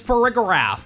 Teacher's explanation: this Pokemon’s official pronunciation is fuh-RIG-uh-raf, with a hard G sound